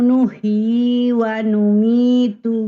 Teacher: Nuhyi yaknya dua harokat